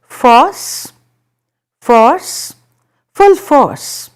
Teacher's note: You don't really pronounce. Are you noticing that you're not pronouncing the R sound very prominently? You are just prolonging that particular vowel sound